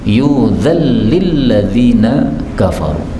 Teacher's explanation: Nun ketemu lam ini boleh idgham